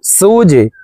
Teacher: জিম কলকলার হরফ, নিচের দিকে ধাবিত করে ধাক্কা দিয়ে উচ্চারণ করব